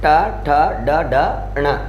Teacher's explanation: ट वर्ग का उच्चारण स्थान क्या माना गया है? मूर्धा माना गया है